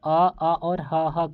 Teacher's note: तो देखिए कंठ फोड़ दिया था यानि कि कंठ से हम लोग बोलेंगे अ और ह को